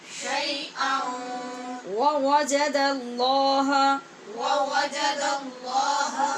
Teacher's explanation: یہاں حمزہ کے اوپر دو زبر کی تنوین ہے تو نون تنوین کے بعد واو حروف یرمالون میں سے ہے لہٰذا ادغام غنے کے ساتھ ہو رہا ہے